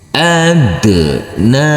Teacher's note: Huruf nun harus dibaca panjang dengan panjang 2 harokat karena huruf nun di atasnya ada huruf alif kecil yang berdiri tegak lurus